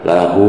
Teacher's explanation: Lahu, ya gitu, panjangnya 4 harokat atau sampai 5 harokat. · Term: mad silah tawilah